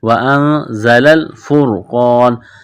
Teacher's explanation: تو را ساکن سے پہلے والے حرف فا کو دیکھیں گے، فا کے اوپر پیش ہے تو را کو موٹا کرنا ہے